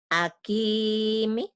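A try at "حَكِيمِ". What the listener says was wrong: Ha, bukan A. Ha.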